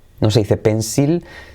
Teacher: Ya veis que cuando va en posición final la L, prácticamente no se pronuncia